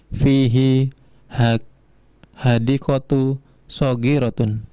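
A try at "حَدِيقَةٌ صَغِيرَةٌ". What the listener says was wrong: Itu ada tanwinnya enggak? Hadiqatun?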